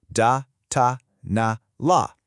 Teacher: Where's your tongue? It's right up behind your top teeth every single time. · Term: alviolar sounds